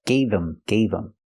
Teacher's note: the H in him is silent because the word's not stressed